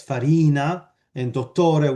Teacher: And when we studied Italian, this is another paper, we looked at the fact that in Italian, basically the final vowel is very, very rarely stressed, right? And you get penultimate stress, that's the default stress, farina and dottore with lengthening.